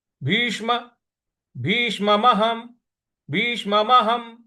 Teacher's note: जो उसके बाद श है वो षट्कोण वाला है तो जीभ को थोड़ा सा रोल करके मूर्ध्वा पे लगाएंगे